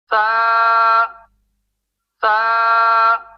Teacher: سا باریک حرف ہے، لہٰذا اس کے نام میں جو الف ہے اسے باریک پڑھیں گے